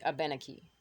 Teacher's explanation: the emphasis falls on the en. So it'd be Abenaki.